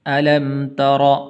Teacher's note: را کے اوپر زبر ہے تو اس لیے اس کو آپ نے پر کر کے پڑھنا ہے